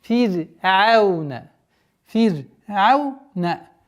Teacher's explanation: Ра в слове фир'аун произносится всегда мягче.